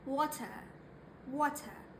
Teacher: In American accent, you're going to pronounce that R. But in British accent, you're not going to pronounce that R and replace it with a schwa sound